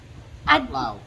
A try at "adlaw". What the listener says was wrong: adlaw. Ad adlaw. not at loud, ad adlaw. Ad not not adlaw, adlaw.